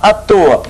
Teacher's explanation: à toa, mais forte é o toa, o A é fraco, por isso que ele é contração, né?